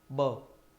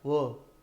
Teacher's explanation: ब बोलते हैं, दोनों होठ टकरा जाते हैं, ब। लेकिन व जब बोलते हैं तो व, तो ये होठ का निचला हिस्सा दांतों को छूता है, व। तो व कहीं ब व नहीं हो जाए, या व को बोलते समय ब नहीं बोला जाए, इसीलिए इस अनर्थ से बचने के लिए वैयाकरणों ने क्या किया है?